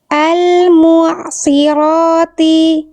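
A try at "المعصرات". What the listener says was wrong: Oke, apa yang membuat sod yang ini lebih kagok? Setelahnya huruf ro. Jadi harus siap-siap huruf ro, tapi sod harus tetap terjaga. Nah, akhirnya fokus ro-nya oke, sodnya terdampak. Ya, harus tetap tebal. Al-mu'asirati.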